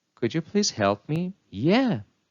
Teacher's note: a different intonation pattern was used. It was rising and falling, which shows enthusiasm. The speaker was happy and enthusiastic to help.